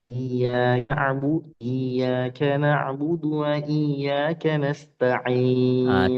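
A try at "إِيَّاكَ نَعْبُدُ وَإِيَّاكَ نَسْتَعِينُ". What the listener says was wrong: Tipiskan du coba. Budu. Budu. Bukan tipis. Du. Du. Budu.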